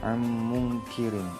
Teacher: di situ ro-nya biasa aja, nggak tebal